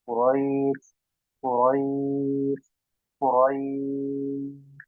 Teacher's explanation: Ya, sukun, ya, sebelumnya huruf berharokat fathah, roi gitu ya. Setelahnya sin kita sukun karena wakaf, ya, jadi sukun ya, kita berhentikan, maka jadi madulin, bisa 2 4 atau 6 harokat.